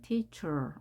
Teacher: 이어서 발음하니까요. teacher라고 영국식은 R을 발음하지 않고요. 미국식은 teacher, R을 정확하게 해줍니다.